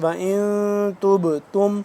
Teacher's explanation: با یہاں پہ ساکن ہے قلقلہ کریں گے